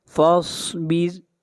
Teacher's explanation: خمسین، خا حروف مستعلیہ میں سے ہے، خا کو موٹا پڑھا جائے گا، خمسین، الف سنہ، الف سنہ، تعرج الملائکة والروح إلیہ فی یوم کان مقدارہ 50 ألف سنہ، فاصبر، صاد کو موٹا پڑھیں گے، صاد حروف مستعلیہ میں سے ہے اور را کو یہاں پر باریک پڑھا جائے گا، را سے پہلے زیر ہے